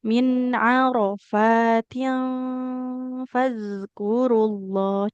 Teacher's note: di kata arafat itu yang panjang fanya saja, rnya juga enggak boleh panjang